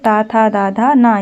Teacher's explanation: इनका उच्चारण करने में हमारी जीभ दांत के पास जाती है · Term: त वर्ग